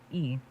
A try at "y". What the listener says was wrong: More Y, not E.